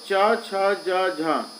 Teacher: च छ ज झ ये होते है तालव्य